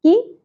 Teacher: کاف کے نیچے زیر زیادہ نہیں کھینچنی ہے اور کاف باریک پڑا جائے گا